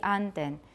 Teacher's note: In the Stockholm dialect, the word for duck has a high pitch early in the word